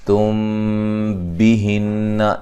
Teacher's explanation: میم ساکن کا اخفا ہے، نون مشدد پہ غنہ ضروری ہے